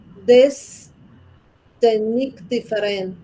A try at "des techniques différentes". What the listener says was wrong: Des techniques, sin la S.